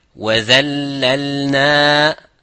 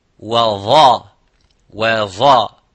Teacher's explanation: There is no difference. The only thing is difference is empty mouth, full mouth, but the same makhraj.